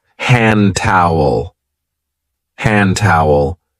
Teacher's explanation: we don't usually say handy towel we link it and we say hand towel